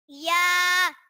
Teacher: जबान के दरमियान और तालु के दरमियान वाले हिस्से से अदा होता है